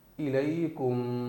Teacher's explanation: ناک سے غنہ کر رہا ہوں، اور یہ ایک الف کے برابر کرنا ہے